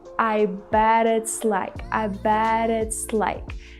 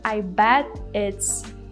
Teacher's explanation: the reason why she used this fast T sound fast D is because the next word it's starts with the vowel sound